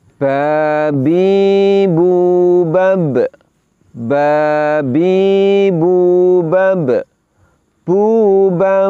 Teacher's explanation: kita bisa merasakan nafas kita berhenti suara kita kemudian Berhenti sejenak baru kemudian muncullah bunyi pantulan